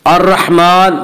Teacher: अर्रहमान, मीम के ऊपर खड़ा ज़बर है, खड़ा ज़बर को एक अलिफ के बराबर खींच कर पढ़ेंगे